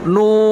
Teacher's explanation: Karena di situ bukan o. Bukan vokalnya bukan o, tapi u. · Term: sempurna dhammah